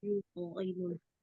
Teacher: Yuto pantulannya mengikuti hurufnya ya karena dia tebal juga pantulannya